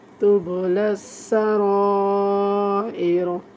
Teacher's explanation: را کو وقف کی حالت میں پر پڑھیں گے